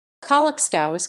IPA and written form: kɔwat͡ʂkɔˈvit͡sɛ (Kołaczkowice)